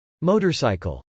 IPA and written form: mˈoʊtɚs.aɪkəl (motorcycle)